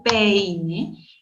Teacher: Cuando yo pronuncio peine, entiendo que la vocal E abierta y la vocal I cerrada van unidas dentro de una misma sílaba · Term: diptongo